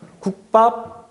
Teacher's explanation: 있는 그대로 기역 받침 뒤에 비읍이 된소리로 바뀐 거잖아요